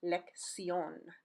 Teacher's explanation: the first C is hard, like a K sound, and the second is soft, like an S sound